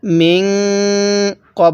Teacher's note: নুন সাকিনের পরে কফটি হলো ইকফার হরফ তাহলে এই নুন সাকিনটা আমরা গুন্না সহিত পড়বো